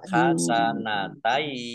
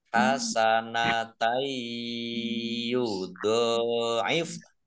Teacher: Fathah tanwin bertemu dengan huruf ya, bacaan idgham bi gunnah, masuk dengan mendengung, yaitu mendengung ya.